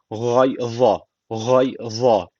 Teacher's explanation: almış burada kalkale tecvidi var hafif bir vurguluyoruz hib boğazdan gay za Peltek ve kalın